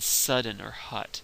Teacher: it is as a low mid back vowel